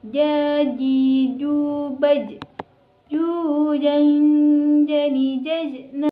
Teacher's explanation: huruf ja dilafalkan dengan menyentuhkan tengah lidah, ditempelkan dengan langit-langit atas